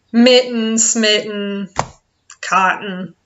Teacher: there's no T's we just forget that there's any T's in it at all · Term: dropped T's